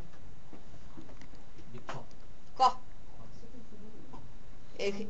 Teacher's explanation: الق لازم يلمس، يبقى صوت انفجاري مهموس مش مجهور حلقي ومفخم. ق انفجاري مهموس حلقي مفخم